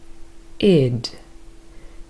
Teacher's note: Id is a combination between a short vowel sound I and the voiced consonant d. And together they form id.